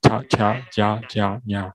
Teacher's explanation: 它是在舌头后面碰触，在它舌头后面碰触上颚的发音